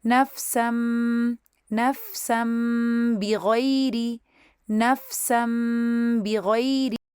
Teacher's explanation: ہونٹوں کو میم سکون کے لیے بند کریں گے، 2 کاؤنٹس غنہ کریں گے اور پھر ان کو با فتحہ کے لیے کھول دیں گے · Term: اقلاب